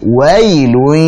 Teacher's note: fathahnya wa sempurnakan dulu, jangan wailun atau wailu jadi tebal